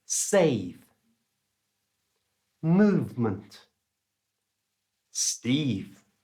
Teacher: when you send in the air through your voice box, which is in your throat, your bottom lip starts to vibrate and you get a V sound.